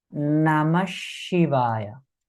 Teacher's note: So now there is a visarga. Though we write it Namaha Shivaya, this visarga when it's joining with Shi it becomes Namashivaya.